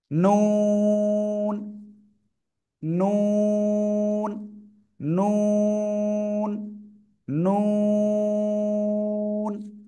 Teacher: দুই ঠোঁট হালকা একটু গোল মতো হবে চার আলিফ টেনে পড়তে হবে